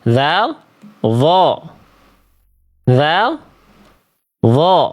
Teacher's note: Dho tebal pangkal lidah naik, dzal tipis pangkal lidah terhampar.